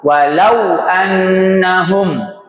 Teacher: dimajukan bibirnya untuk pengucapan wa au lau. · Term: layin